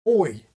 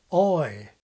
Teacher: in today’s SSB the vowel in the word CHOICE is quite close, oj, whereas the King has the more open RP vowel, ɔɪ